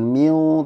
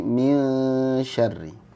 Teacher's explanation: nun sukun ketemu shin itu ikhfa-nya ikhfa tipis, jadi jangan miu tapi min syarri.